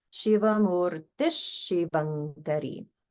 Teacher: that visarga gets pronounced like Ish to match the following S sound.